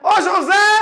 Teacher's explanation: Última sílaba tônica. É uma palavra oxítona.